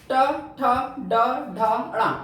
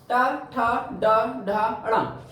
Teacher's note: हमारी जीभ गिरती है मूर्धा पर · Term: मूर्धन्य व्यंजन